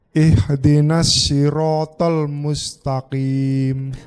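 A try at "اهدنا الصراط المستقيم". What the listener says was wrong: Shotnya lebih kecil. Ihdinas sirata. Ya, PR-nya shot ya. Shotnya kurang kecil. Ihdinas siratal mustaqim. Di shot itu condongnya ke sin, bukan ke shin yang titik 3. Sasisu. Kalau shot lokasinya sama, cuma lidahnya terangkat. Kemarin kita belajar sifat isti'la, lidahnya terangkat.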